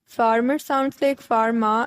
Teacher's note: this accent drops the r sound in words ending in ar